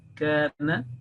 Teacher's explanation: There should be no nasal sound at the end, or any tinge of nasal sound, any addition of nasal, not like kana, kana, na, na.